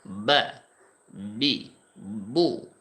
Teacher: এই বা উচ্চারণ হবে দুই ঠোঁটের মাঝখান থেকে। বা উচ্চারণের সময় জিহ্বার কোনো কাজ এখানে নাই, দুই ঠোঁটের মাঝখান থেকে উচ্চারণটা বের হবে। বা, বি, বু, দুইটা ঠোঁট হালকা একটু প্রেসার দিলে বা উচ্চারণটা হয়ে যাবে।